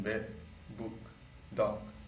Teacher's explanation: The glottalization of final stops in bed, book, dog.